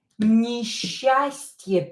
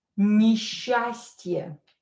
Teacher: Pay attention to this combination, S and cha. We are going to pronounce it as sha. Несчастье. So pronounce these two letters as sha.